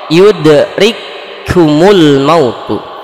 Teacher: Dua huruf di sini kafnya menjadi satu huruf, sedangkan huruf yang kedua menjadi bertasydid. Jadi ketika dibacanya itu seolah-olah bertasydid. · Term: idgham mislain